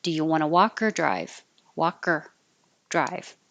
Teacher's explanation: the or is not important to pronounce perfectly with an or it can change to just the ER noise so I put ER to represent that do you want to